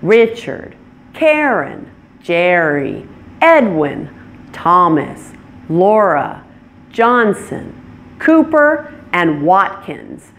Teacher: they stress the first syllable loudest and longest